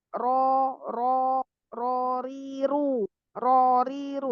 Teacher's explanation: ro itu kalau dia berharokat fathah dibaca ro ya. Ro bukan ra.